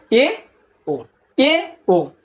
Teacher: জিহবা যখন উঁচু থেকে জাস্ট একটু নিচে নামে যেটাকে বলে উচ্চ মধ্য